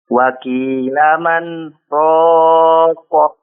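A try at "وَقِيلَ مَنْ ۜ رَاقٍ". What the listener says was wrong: Waqila man. Agak tahan sedikit lagi. Waqila man raqa.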